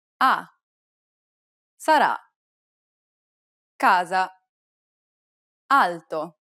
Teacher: It's identical to the A sound in the word father, except that it's held for a little longer. Open your mouth wide and let the air pour out.